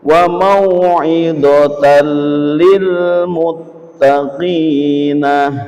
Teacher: Suara dumah tanwin apabila tememu dengan lam. Suara dumah tanwin langsung diganti suara lam dengan cepat. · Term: idgham bila ghunah